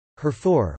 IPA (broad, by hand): hwɛrfoʊr